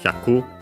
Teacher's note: Hyaku on its own accented on the last mora.